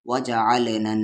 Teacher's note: नून पर तशदीद हो या मीम पर तशदीद हो तो गुन्ना होगा, गुन्ना यानी आवाज़ को नाक में रखना।